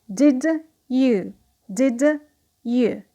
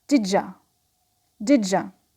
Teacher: when the first word ends with d sound and the second word starts with u sound, they come up with the sound j.